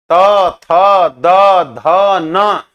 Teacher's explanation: दांत से त थ द ध न इसमें दांत का इस्तेमाल हो रहा है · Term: दंत वर्ण